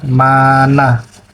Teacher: Konsonan nasal apikoalveolar dibentuk dengan cara menghambat udara yang dihembuskan melalui paru-paru pada posisi P, pangkal lidah yang ditekankan rapat-rapat pada alveolum atau gusi.